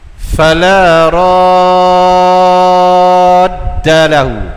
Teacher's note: Bertemu huruf yang bertasydid. Tak kira huruf apa-apa pun. Ini 6 harakah panjang dia. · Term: Mak lazim, kalimi, musaqqal